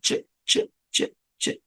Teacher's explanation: গলায় একটু নড়তেছে কিন্তু কাঁপতেছে না, ওই একটা ভাইব্রেশন যে, এটা হচ্ছে না। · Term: ভয়েসলেস সাউন্ড